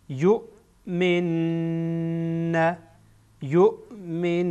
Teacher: اینجا همزه از اخیر حلق ادا میشه